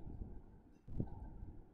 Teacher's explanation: কুফুয়ান এখানে ইজহার হবে, কেননা দুই জবর বা তানউইনের পরে ইজহারের হরফ হামজা বা আলিফ এসেছে